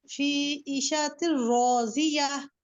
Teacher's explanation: را میں تفخیم ہوگی اور ساتھ الف ہے شیوا مستعلیہ, وہ بھی موٹا ہو گیا.